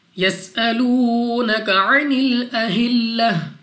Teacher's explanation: سین کو سیٹی والی آواز کے ساتھ پڑھیں گے